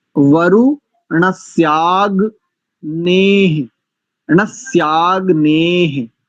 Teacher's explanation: मित्रस्य और वरुणस्य, इन दोनों शब्दों में जो सकार है वो दंत सकार है